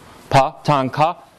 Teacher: they're all voiceless stops.